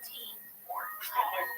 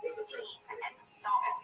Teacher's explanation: there's no meaningful difference between the aspirated t, as in tea, and the unaspirated t, as in steam